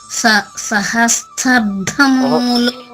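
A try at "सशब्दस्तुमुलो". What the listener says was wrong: సహ లేదు అక్కడ, సశబ్ద స్తుములో. సాతు స్తుములో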